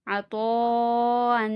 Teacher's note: زبر طا، عطا، حمزہ دو زبر ان، عطاءن، یہاں پہ بھی مد واجب ہے، اسے 4 الف کے برابر کھینچ کے پڑھیں گے